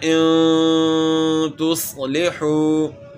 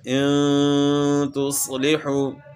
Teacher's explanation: جو غنہ ہے وہ اس کی مقدار ایک الف کے برابر ہے. اور ایک الف جو ہے نا وہ آپ کو بتایا تھا کہ جس طرح کھلی انگلی کو آہستہ سے بند کر لیں یا بند انگلی کو آہستہ سے کھول لیں تو اتنا ٹائم لگتا ہے.